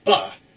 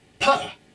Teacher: But B, or ba, is voice sound, while P, or pa, uses only air.